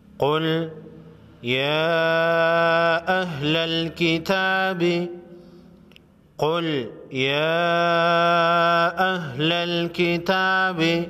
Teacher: قاف حروف مستعلیہ میں سے ہے، موٹا پڑھیں گے، چھوٹی مد کو 3 الف کے مقدار یعنی 3 سیکنڈ لمبا کریں گے۔